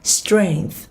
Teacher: Âm đuôi là âm lưỡi ngậm hờ giữa hai răng, đẩy hơi